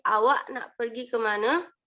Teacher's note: pada huruf a di akhir itu menjadi e